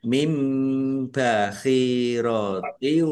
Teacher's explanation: Nun sukun bertemu dengan huruf ba. Bacaan iqlab dibaca. membalik nunnya dibaca mim